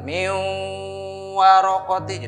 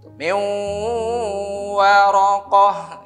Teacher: Nun sukun, suara nun sukunnya seolah tidak dibaca ya, dan wawunya bertasdid karena tasdid double ya, kayak dua ini hurufnya. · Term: idgham bigunnah